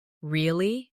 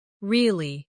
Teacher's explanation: with a falling tone to show you don't believe someone · Say, really? With a rising tone to show surprise.